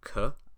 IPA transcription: k